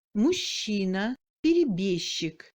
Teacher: La combinaison du G avec le Ч se prononce comme ch, mou, long, мужчина, перебежчик.